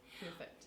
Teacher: New Zealander will stick their lips out to say purr, and the Australian, the lips won't come out quite as far.